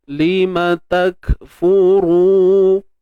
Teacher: Dan tebal pada ra yang berbaris hadapan tu